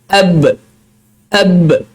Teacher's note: Bila kita matikan lagi nampak ab. Maknanya berlakunya syiddah di saat mana qalqalah itu juga berlaku. Ab, tertahan suara.